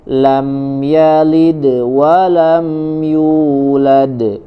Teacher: Sugro ya, sugro walaupun dia ada di akhir kata ya, ada di akhir kata tapi setelahnya masih ada huruf yang lain. Tapi di akhir ayatnya walam yulad, maka di situ adalah qalqalah kubro ya.